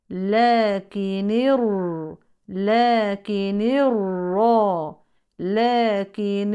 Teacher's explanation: راء مشدده بالفتح مفخمه كالرا المفتوحه تماما يعني نطلع من كسر النون على الراء المفخمه برايها لكن الر